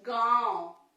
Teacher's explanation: गांव तो हवा हमारे मुंह और नाक दोनों से निकलती है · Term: अनुनासिक